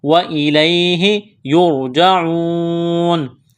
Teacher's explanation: را ساکن سے پہلے پیش ہے تو را کو موٹا کرنا ہے، واو مدہ ہے، الف کے برابر کھینچنا ہے، یہاں اس آیت پر جب وقف کریں گے تو نون کو ساکن کریں گے۔